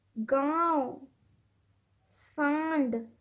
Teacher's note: हवा नाक और मुंह दोनों से बाहर निकलती अनुनासिक में है